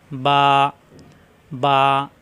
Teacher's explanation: দুই ঠোঁট থেকে উচ্চারণ মিলানো ঠোঁট ছেড়ে দিলে হয়ে যায় বা